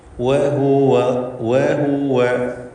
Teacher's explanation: വാവ് രണ്ടു ചുണ്ടിൽ നിന്നും ഉച്ചരിക്കണം വൃത്താകൃതിയിൽ ചുണ്ടുകളെ വെച്ചുകൊണ്ടാണ് വാവിന്റെ ഉച്ചാരണം വരിക